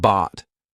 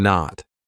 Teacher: My tongue is still up there, but I just didn't release it. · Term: held T